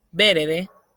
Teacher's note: la segunda E casi no se escucha y es la que se va a perder, quedando verde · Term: síncopa